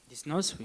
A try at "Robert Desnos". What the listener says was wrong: Ouais, là, on prononce le S, mais oui.